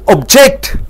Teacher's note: ஜெக்டுக்கு அழுத்தம் கொடுக்கும் போது மறு என்று மாறிவிடுகிறது